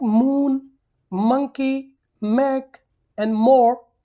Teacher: the shape of the mouth or the position of the mouth is like P and B but this time the air does not come through the mouth it comes through the nose